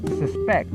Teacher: having the stress on the last syllable depicts the word as a verb